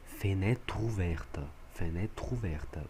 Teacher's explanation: O TR passa para a próxima sílaba. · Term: liaison